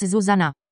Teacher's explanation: Pronunciation both Czech and Slovak have initial stress and mark vowel length with acute accents, so the correct pronunciation of the name in the dvojité vo languages is with stress on the first syllable and with short vowels